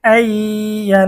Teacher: বাগুন্নার হরফ হচ্ছে 4টি, তার মধ্যে প্রথমটি হচ্ছে ইয়া। এখানে নুন সাকিনের পরে ঈদগামে বাগুন্নার হরফ ইয়া এসেছে, গুন্না সহ মিলিয়ে পড়তে হবে।